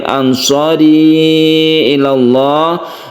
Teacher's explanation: Ansari tersendiri, ila tersendiri, maka kita baca jaiz, boleh. Ansari rinya ini dibaca 1 alif, 2 alif, bahkan 3 alif itu tidak masalah. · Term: mad jaiz munfasil